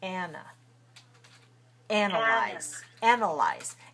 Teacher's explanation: we say ah on the stress syllable and we say uh on the weak civil syllable ana analyze